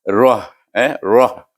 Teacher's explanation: Iaitu dia bunyi pangkal halkum ha ini dan roh ini tebal.